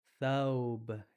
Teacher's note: It kind of comes out with 3, the number 3. So the TH, you're going to put your tongue in between your teeth and air is going to come around it.